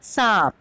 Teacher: तो जो बिंदु है इसे हम सिर्फ नाक से बोलते हैं और ये कहलाती है अनुस्वार। चंद्र बिंदु को हम नाक और मुंह दोनों से बोलते हैं और ये कहलाते हैं अनुनासिक।